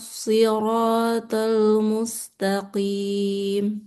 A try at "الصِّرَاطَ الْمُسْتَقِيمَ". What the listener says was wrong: Ini kurang tebal nih. Siratal mustaqim. Nah, qafnya ini tebal atau tipis nih? Iya, tebal dia. Mustaqim.